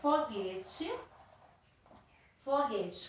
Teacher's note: não é a última é a penúltima então ela é paroxítona